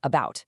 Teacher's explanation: It's a mid-central sound. That just means your tongue and lips are completely neutral and totally relaxed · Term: schwa